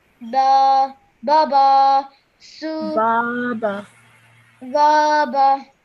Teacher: because of the alif madda after the ba, you have to stretch that